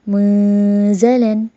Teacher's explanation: میں نے نون کی آواز کو چھپایا بھی اور غنہ بھی کیا